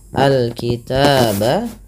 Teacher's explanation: Alkitabah alif lam qamariyah. Dibaca dengan jelas suara lamnya. Alkitaba taba ada fathah bertemu alif lagi kecil.